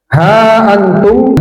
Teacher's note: Ha antum dipanjangkan 4 sampai 5 harokat